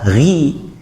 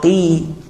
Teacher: Huruf huruf qaf kasroh qi. Tafkhimnya, ketebalannya itu akan berkurang drastis dibandingkan ketika dhammah ataupun fathah.